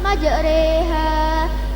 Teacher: Imalah ialah mencondongkan alif mendekati kepada ya. Majroha, roknya dibaca imalah, majreha.